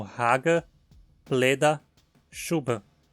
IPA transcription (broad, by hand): hagə, pledɐ, ʃubə